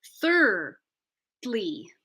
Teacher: we're gonna say sir finish that syllable push the D to the next syllable so that we allow the r to ring out in full · third like Thursday I'm just gonna end on the r thirdly I'm pushing the d l y to the next syllable now let's keep the D in the first syllable third thirdly